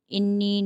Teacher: انی نون مشدد آ رہا ہے، ان نون پہ تو اس پر ایک الف کی مقدار غنہ کریں گے۔ یا کے اوپر چھوٹا مد آ رہا ہے تو 3 الف کی مقدار اس کو کھینچیں گے۔